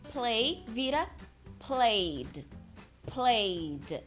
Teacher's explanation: do Ed no passado vai ser o som de D